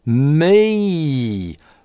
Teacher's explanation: А в английском в [i] мы приезжаем с запозданием. Дифтонг начинается от [ɪ], расслабленного звука. [mɪi] А губы любим максимально и язык к небу тянем в [i] только потом.